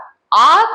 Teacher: आ को बोलते समय हमारा मुख पूरा प्राय पूरा ही खुल जाता है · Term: विवृत स्वर